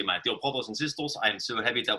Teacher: all the hard consonants get dropped and become soft consonants. So every T becomes a D and every K becomes a G and so forth.